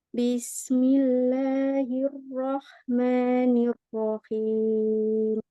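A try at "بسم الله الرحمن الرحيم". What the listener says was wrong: Ro-nya jangan hilang suaranya, Mi. Pas dia ro.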